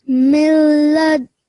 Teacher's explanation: That's why you've ignored the noon and you've assimilated the meme and the lam sound. So idgham kamil took place because you can't hear the noon sound at all.